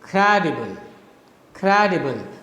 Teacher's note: the first one is stressed and the following remaining two are unstressed. So you have first stressed, then unstressed, and then unstressed. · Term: dactyl